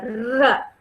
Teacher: my tongue is just touching the upper palate. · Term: r sound